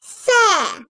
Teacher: S. Dil ucunun ön dişlerin arasına hafifçe girmesiyle çıkarılır. Bu harf okunurken dil dişlerin arasından hafifçe dışarı çıkarılır. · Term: peltektir, peltek